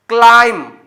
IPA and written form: klaɪm (Climb)